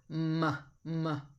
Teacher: a bilabial because it uses the two lips